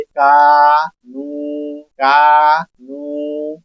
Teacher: पहले अलिफ मद्दा और फिर वाऊ मद्दा दोनों को हम एक बराबर लंबा करेंगे।